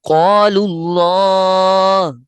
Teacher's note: لام کے اوپر جو پیش ہے، پیش ہونے کی وجہ سے اللہ کا لام موٹا پڑھا جائے گا، یعنی اللہ کو پر پڑھیں گے۔